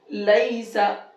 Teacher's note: ابھی یہ یا لین ہے کیونکہ یا ساکن سے پہلے زبر ہے۔ جلدی پڑھیں گے، نرمی سے پڑھیں گے